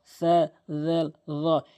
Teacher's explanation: জিহ্বার আগা সামনে দুইটি দাঁতের আগা